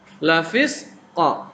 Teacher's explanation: sukun qaf ini adalah huruf qalqalah. Qalqalah itu artinya memantul.